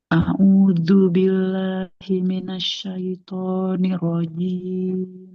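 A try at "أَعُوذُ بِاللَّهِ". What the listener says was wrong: Jangan audu billah ya, tapi zu. Huruf zal ujung lidah ke ujung gigi seri atas. Zu.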